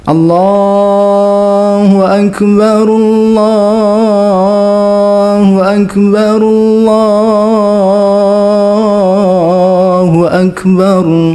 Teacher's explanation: kata Allah dapat dibaca lebih dari dua harakat